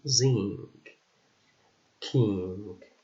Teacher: ng, which is a voiced velar and nasal sound